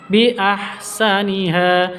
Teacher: ha panjang 2 ketukan, mad iwad. Mad asli berada di waqaf, mad iwad.